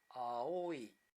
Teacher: in aoi, the fall is abrupt after the tonic syllable o